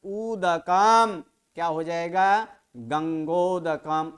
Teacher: जब ये यहाँ पर समास होगा गंगायाः उदकम इति गंगोदकम, तो वहां पर क्या हो गया, यहाँ पर संधि हो चुका है। अवर्ण और उवर्ण दोनों मिलकर ओ हो चुका है